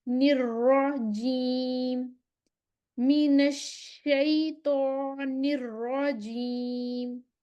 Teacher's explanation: را ہم نے رولنگ ساؤنڈ دینی ہے ادھر